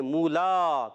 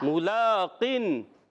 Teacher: اور یہاں پر بھی یا مدہ ہے, یا ساکن سے پہلے زیر یا مدہ ہوگا, ایک الف کھینچ کر ادا کرنا ہے. ملاقن میم پر پیش ہے, حرکت کو نہیں کھینچے. لام پر کھڑا زبر ہے, اب لام کو تو ایک الف کھینچیں گے, مولا, میم کو نہیں کھینچیں گے.